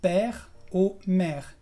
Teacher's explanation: El segundo sonido, que es E, de la E pero relajada, lo vas a pronunciar primero cuando tienes el accent grave.